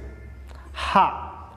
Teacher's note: sifatnya atau karakternya yakni hamas yaitu nafas berhembus atau berdesis. H, ketika mengucapkan huruf H maka nafas berhembus.